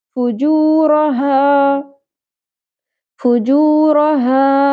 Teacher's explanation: فو، جو مد اصلی ہے، واو ساکن سے پہلے پیش، ایک الف کے برابر کھینچیں گے. جو رو پر کریں گے، شارٹ رکھیں گے.